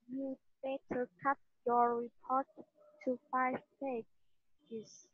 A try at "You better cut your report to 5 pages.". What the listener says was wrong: Pages nhá, hai âm đấy. Pages, not page. Pages nhá.